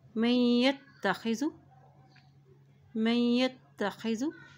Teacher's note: मीम की ज़बर को हम या के साथ मिलाएंगे क्योंकि या के ऊपर शद है, और इसी तरह या की ज़बर को ता के साथ मिलाएंगे क्योंकि ता के ऊपर भी शद है।